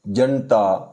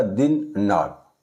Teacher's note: इस ना का उच्चारण जब हम करते हैं तो हमारी जो जीभ है ये ऊपर वाले दांतों की नोक को छूती है, इसका स्पर्श होता है उससे, इसलिए इसको हम दंते ना कहते हैं।